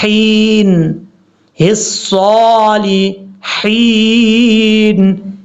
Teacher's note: لام کے بعد ہا بریک ہے، بھاری ساؤنڈ کے ساتھ نہیں پڑھنا، ہین نہیں پڑھنا، حین، الصالحین، یہ ہے اس کا پڑھنے کا طریقہ۔